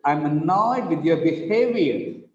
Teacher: With the word behavior, the second syllable is stressed.